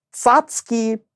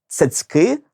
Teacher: в українській мові є і твердий ц і м'який ць а в російській тільки твердий